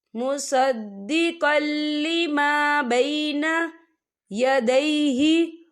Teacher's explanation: یا دیکھیں مصدقل، قاف کے پر تنوین ہے اور تنوین کے بعد جو ہے لام آ رہا ہے، اور لام جو ہے حروف یرملون میں سے ہے، تو یہاں پر ادغام ہوگا اور ہم اسے بنا غننے کے پڑھیں گے